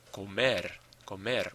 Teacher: The stress is on the syllable ending in the vowel and R.